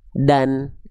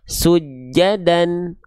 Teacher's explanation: Nah, dibacanya gimana? Dibacanya kalau baris atas dua bukan cuman bunyi vokal A saja, tapi bunyi vokal konsonan A dan N. Jadinya an. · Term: Fathatain